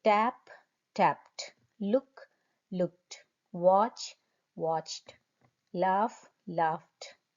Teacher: brush the I me the past tense endings are Ed only spelling is Ed only but the sound is T